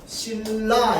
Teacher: 90% 이상 유음화가 일어나요. 니은이랑 리은이 만나면 니은이 리을로 바뀌죠